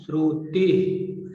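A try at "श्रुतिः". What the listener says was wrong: Visarga is there. No, Shrutihi. Shrutihi. Shrutihi. Shrutihi.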